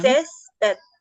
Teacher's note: Césped es también grave, lleva acento en la primera sílaba.